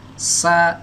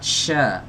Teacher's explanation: sa yang pertama yang tanpa titik, ini desisnya tajam. Sementara sya yang ini desisnya nggak tajam, cuma nyebar. Jadi beda ya, tajam dengan menyebar.